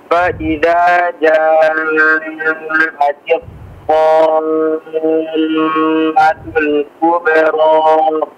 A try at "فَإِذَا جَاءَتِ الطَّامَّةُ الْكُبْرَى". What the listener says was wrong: Afwan, dipanjangkan lagi madnya. Madnya 6 harakat ya. Ini di luar hitungan si gunnah mimnya.